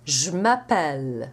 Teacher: Let's drop the mute E in the je and you get je m'appelle. Both the j and the m are voiced, so there's no difference, there's no change.